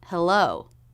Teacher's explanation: it begins with the h consonant and has the e as in bed vowel but this is very quick · the second syllable begins with the l consonant so the tongue tip will come up here and touch the roof of the mouth just behind the teeth